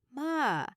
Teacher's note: Drop your voice down almost like you're sighing or tired. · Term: low tone